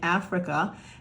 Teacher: some of us would argue that the I is taking on a schwa sound too